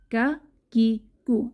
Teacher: কাফের মাখরাজ জিহবার গোড়ার থেকে একটু আগে বাড়িয়ে তার বরাবর উপরের তালুর সঙ্গে লাগিয়ে উচ্চারিত হয়, মধ্যখান পেঁচানো, কাফ।